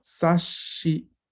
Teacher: Si se dan cuenta, yo no digo sashi, yo digo sashi. El sonido que duplico es el sonido sh, porque yo la sílaba que tengo después es shi. Entonces yo lo que hago es duplicar el sonido sh de esa sílaba. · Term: doble consonante